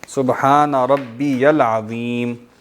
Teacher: اصل میں اس طرح ہے نا، ربی العظیم کیوں ہے نا، ربی پھر یہ یا پر زبر ہے اور آگے عظیم ہے. ٹھیک ہے، تو یہ یا کی زبر لام سے ملتی ہے